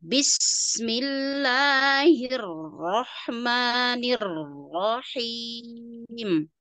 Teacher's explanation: perhatikan untuk bis itu b-nya b-nya kelamaan Ya kepanjangan